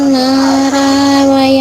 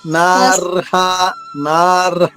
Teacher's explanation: రా కి దీర్ఘం ఉండకూడదు తల్లి ర్ ర పొల్లుగా చెప్పాలి